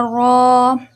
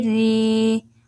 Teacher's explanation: را الف زبر را، را واو پیش رو، را یا زیر ری، را رو ری، را زبر اور را کے پیش کو موٹا کریں گے، را زیر کو موٹا نہیں کریں گے